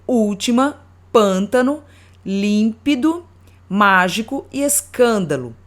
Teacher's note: Proparoxítona, quando a sílaba tônica é a antepenúltima.